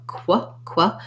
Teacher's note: All of these have the letters QU, say the sounds k and w, qua, qua. If that's challenging for you, try just doing your W sound, w, and then add the K, qua, qua.